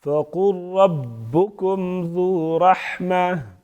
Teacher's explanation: فَقُلْ قاف پر پڑھیں گے اور را کو بھی پر پڑھیں گے